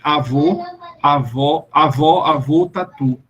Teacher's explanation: Produza essas vogais e observe que, na sua pronúncia, os lábios se arredondam e se projetam para frente, fazendo o tal do biquinho de francês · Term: arredondadas